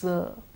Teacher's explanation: to raise the tongue into the Polito a Buehler position but the tongue should not exactly touch the angular ridge there should be a little space and we have to force the air out in the manner of a fricative it's a continuous sound